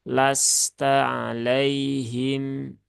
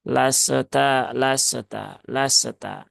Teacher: sinnya dia punya sifat rakhaah atau mengalir maka alirkan saja